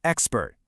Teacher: In English, we end the word with a hard, abrupt T sound